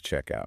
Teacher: the consonant detaches from its original word and slides over to attach to the vowel. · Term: linking